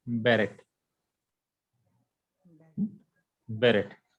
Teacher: Shiva is a half vowel. It gives a very short E sound.